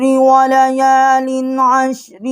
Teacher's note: یہاں ہم نے غنہ نہیں کیا کیونکہ آگے عین ہے، حروف حلقی ہے